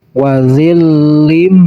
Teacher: Jadi cara bacanya harus didengung, kemudian ditekan dan ditahan 2 harokat dari huruf idghamnya. Huruf idghamnya yaitu mim. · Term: idgham bigunah